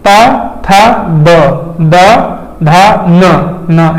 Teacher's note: ता वाला है ना वो दांत में लगना चाहिए